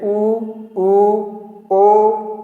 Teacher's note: वृत्ताकार स्वर का मतलब कि जब हमारे ओठ का आकार वृत्त के गोलाकार हो जाता है, जैसे वृत्त होता है गोला, उस तरह का जब हमारा ओठ का आकार हो जाता है, उनसे जिन स्वरों का उच्चारण होता है उनको वृत्ताकार स्वर कहते हैं।